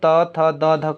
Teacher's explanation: अब दंत्य क्यों होगा, देखिए दंत्य इसलिए हो रहा है कि जब भी हम लोग त थ द ध कर रहे हैं तो हम लोग का जीभ जो है सीधा सीधा दांत को टच कर रहा है